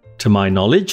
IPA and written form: tə maɪ ˈnɒ.lɪdʒ (To my knowledge)